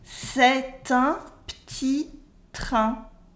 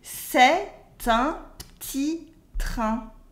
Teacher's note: notice that I do la liaison between est and un, so it makes t'in.